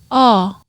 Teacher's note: This sound is kind of between the ah and the o.